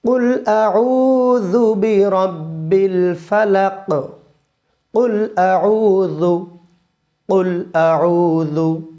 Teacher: কুল আউ, জালটা নরম হবে, জিবার আগাল উপরের দাঁতের আগায় লাগাবো, তাহলে জু খুব নরম সফটলি চলে আসবে